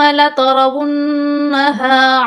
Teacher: یہ ہا کو میں نے لمبا کیا ہے، اس پر کھڑا زبر ہے، اس کو میں نے 2 الف کی مقدار آپ نے لمبا کرنا ہے۔